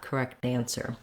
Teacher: And with the T changing to more of a flap, correct answer.